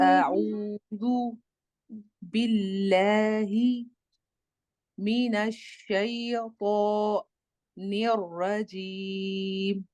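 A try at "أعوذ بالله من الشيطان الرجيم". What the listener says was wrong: ٹھیک ہے، بس شین اور تو میں خیال رکھنا ہے کہ آپ کے ہونٹ نہ ہوں آگے کی طرف نہیں آئے، ہم اکثر میں اس پہ زور دیتے دیتے نا یا موٹا بناتے بناتے تو کو تو ہم اپنے ہونٹوں کی شیپ چینج کر لیتے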